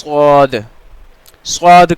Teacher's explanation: है तो हम इसको कैसे प्रोनाउंस करेंगे थिक करवा इस में पढ़ेंगे फुल माउथ के साथ भरी हुई आवाज में · सद को हम जुबान की नोक और दोनों दांतो के अंदर किनारे से अदा करेंगे